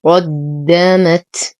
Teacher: لدينا تنوين وبعده ميم، فالحكم إدغام كامل مع غنة أكمل ما تكون. قدمت، نفخم القاف نشد الدال ونهمس التاء